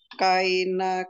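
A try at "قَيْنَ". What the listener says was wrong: Koina, hati-hati, jangan jadi kai.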